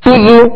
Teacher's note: ہونٹوں کو گول کریں گے، دونوں پر پیش ہے